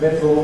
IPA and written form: ˈmɪdɫ (middle)